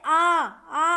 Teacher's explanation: जिन स्वरों के उच्चारण में मुख द्वार पूरा खुलता है उसे क्या कहते हैं हम? विवृत।